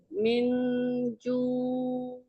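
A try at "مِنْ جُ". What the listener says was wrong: Mi-nya ditekan lagi. Miju. Jadi ngelepas ke ainnya natural, jangan ditarik, jangan juang gitu, jangan ada gerakan menarik dari bibir.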